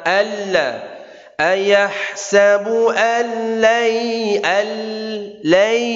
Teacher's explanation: nun ketemu lam, enggak perlu anlai, tapi al, nun hilang. Nun enggak usah terasa suaranya, langsung ke lam. Alla ya, idgham bila gunnah.